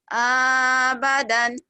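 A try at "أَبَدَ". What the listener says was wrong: Abada. Nggak ada dannya. Belum ada tanwin.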